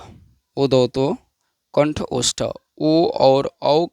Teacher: ओ और औ का उच्चारण स्थान कंठ और ओष्ठ से हम लोग करते हैं, अतः इन्हें कंठोष्ठ वर्ण कहा जाता है।